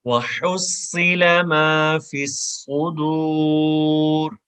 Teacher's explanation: Next آیت میں صاد ہے، صاد کو موٹی آواز میں پڑھیں گے اور وصل بھی ہے اس میں، اور پلس یہ موٹی آواز میں پڑھا جائے گا.